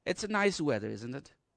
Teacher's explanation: my pitch will go down at the end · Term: falling tone